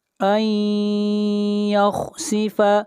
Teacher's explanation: نون ساکن کے بعد حروف یرملون میں سے یا ہے، ادغام مع الغنہ ہوگا